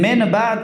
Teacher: یعنی نون را به مم تبدیل می‌کنیم بعد از اوی میم را اخفا می‌کنیم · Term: اقلاب